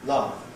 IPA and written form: lʌv (love)